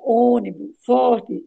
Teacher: o acento circunflexo na vogal O indica que ela forma a sílaba tônica. E o som é fechado · E o som é fechado aí, ó, ônibus, forte, e que essa vogal deve ser pronunciada fechada